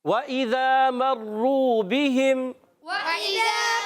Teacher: واو ہونٹوں کی گولائی سے ادا ہوتا ہے. واو متحرکہ ہے، ہونٹ گول کریں.